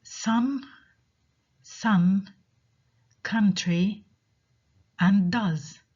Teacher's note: the second sound in each of these words is ah while the spelling for each of these words is different